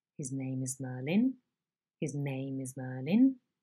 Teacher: the onset and all remaining syllables are uttered on a low level pitch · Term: low head